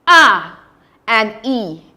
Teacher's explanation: The tongue moves from a a more open state. The mouth moves from a more open state and goes closer up. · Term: Gliding motion